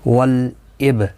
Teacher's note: لام ساکن کو ہلانا نہیں، اب با ساکن پر قلقلہ ہوگا۔